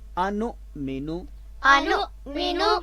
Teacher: حمزہ پہلے بھی ہے جو مفتوح ہے اور آگے جو درمیان میں آ رہا ہے وہ ساکن ہے، تو لہٰذا اس کو جھٹکے کے ساتھ پڑھیں گے